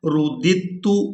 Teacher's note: دال کو تا مشدد کے ساتھ ملانا ہے